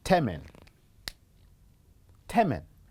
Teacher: the alveolar is very closer to the bilabial, and apart from it, they are both nasal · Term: assimilation